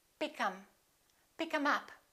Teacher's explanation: We drop this TH and we say, pick 'em. Pick 'em up.